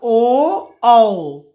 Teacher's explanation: कंठ और ओष्ठ यानी होठ की सहायता से बोला जाता है ओ औ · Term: कंठोष् वर्ण